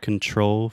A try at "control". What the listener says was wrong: Just make sure to articulate that final L.